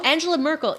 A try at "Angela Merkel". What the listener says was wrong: But I don't know why, by the way, in German you would pronounce the G, soft G.